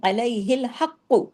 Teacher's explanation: قاف ہیوی اور قاف ڈبل، کیوں؟ تشدید ہے نا.